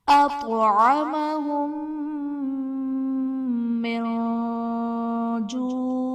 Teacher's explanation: میم ساکن کے بعد دوسری میم ہے تو یہاں پر ادغام شفوی کا قاعدہ ہوگا، یعنی میم ساکن میں ہم غنہ کر کے پڑھیں گے۔ من جوع میں نون ساکن کے بعد حرف اخفا میں سے جیم ہے تو یہاں پر ہم اخفا کا غنہ کریں گے۔